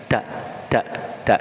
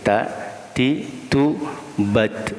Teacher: Tak, ditekan ya. Jadi ujung lidah ke pangkal gusinya ya, ke gusinya ditekan.